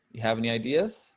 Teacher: in conversation we uh occasionally leave off the do and maybe just have Rising intonation on there